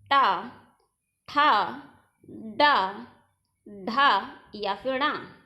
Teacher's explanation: हमारी जीवा पहले मुड़ती है, फिर मूर्धा वाले स्थान को स्पर्श करती है, उसके बाद वापस आती है, तब ध्वनि बाहर उच्चरित होती है। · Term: मूर्धन्य